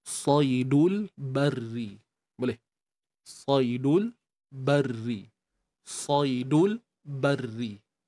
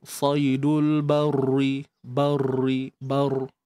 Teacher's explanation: Sebab ra ni baris bawah. Jadi kita baca dengan nipis tanpa kita mengangkat pangkal lidah lah.